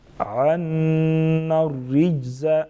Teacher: را کے نیچے جب زیر آ جائیں اس کو باریک پڑھیں گے · ناک میں چھپا کے پڑھیں گے، کشفت عنا الرجز، عنا الرجز، نون مشدد غنہ کریں گے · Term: را باریک